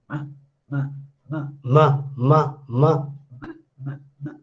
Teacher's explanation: As soon as I close my nostrils, then you can see that you can't hear the voice. Now it is ma, very clear, ma, ma. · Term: nasal